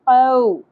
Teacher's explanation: واو ساکن سے پہلے زبر، حرف لین نرمی سے ادا ہوگا